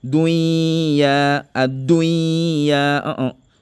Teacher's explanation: Chaque fois quand tu vois le mot dunya là, il ne faut pas appliquer al-ghunna. Il faut dire dunya, ad-dunya.